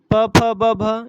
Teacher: प फ ब भ यह अपने ओष्ठय व्यंजन है